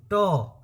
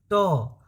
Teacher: अच्छा चलो एग्जाम्पल से एक बार बोल के देखो, ट, अब तुम ट बोलो एक बार, सब लोग जो भी वीडियो देख रहा है ना, आप ट बोलो। तो ट जब बोल रहे हो ना, देखो जीभ का अगला हिस्सा कहाँ जाके सट रहा है, पीछे जाके सट रहा है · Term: मूर्धन्य